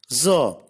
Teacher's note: Za is a voiced alveolar fricative.